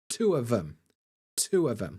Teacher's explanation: the th almost becomes the v f sound · two of them the stress is on two